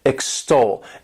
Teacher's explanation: This word has 2 syllables, and the stress is on that second syllable